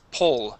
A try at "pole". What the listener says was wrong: Okay, almost. You're saying pole with an O sound. Po. It is pole. The difference is very strange. It's very difficult. See, we have pole and pole.